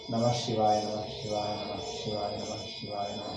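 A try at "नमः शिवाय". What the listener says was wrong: You are, when you say Namah Shivaya, you are changing Visarga to Sha. Allava? You have already changed. I am telling, without changing, you try to pronounce once. See, Namaha, a jerk ansuttade. My tongue feels little strain. Therefore, according to rule, there is an option. You may retain Visarga or you may change it to Sha. Two options are there.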